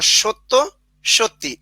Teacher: কিন্তু অতিরিক্ত কি এসেছিল সত্য এখানে হয়ে গেল সত্যি অর্থাৎ শেষে সত্য থেকে সত্যি এসে গেল অর্থাৎ অতিরিক্ত একটা স্বরধ্বনি চলে আসলো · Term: অন্তঃসরাগম